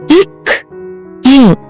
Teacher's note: இக், இங் ஆகிய இருமைகளும் நாவின் முதற்பகுதி, அன்னத்தின் அடிப்பகுதியை பொருந்துவதால் பிறக்கின்றன